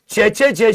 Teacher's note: च वाला समूह जो होता है इसको स्पर्श संघर्षी भी कहते हैं।